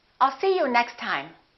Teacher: we only pronounce 1 T